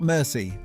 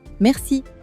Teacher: The French R is not made in the front of your mouth, the way English speakers naturally produce it. It's made in the back, near your throat, almost like a gentle scrape.